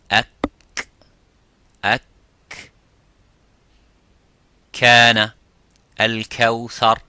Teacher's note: the kaf touches the roof of the mouth, a little bit touches the bone of the roof of the mouth, which is further towards the tongue, towards the lips, I'm sorry.